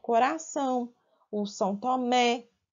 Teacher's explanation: a sílaba mais forte de coração é o São, do Tomé é Mé.